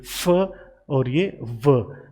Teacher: वो जो मैंने अभी बताया कि आपके जो लोअर लिप है उसको आप टच करते हैं अपर टीथ की तरफ। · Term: लेबियोडेंटल साउंड